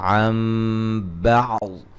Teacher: یہاں نون کو میم سے بدل کے پڑھیں گے, غنہ کریں گے. اقلاب ہو رہا ہے نون ساکن کا.